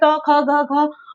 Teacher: अब क वर्ग का उच्चारण गले से होता है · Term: कंठ